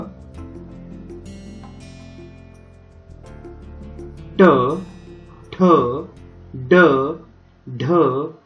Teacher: ज्या वर्णांचा उच्चार करताना जिभेचा स्पर्श कठोर व कोमल टाळू यामधील भागास होतो तेव्हा त्यांना मूर्धन्य वर्ण असे म्हणतात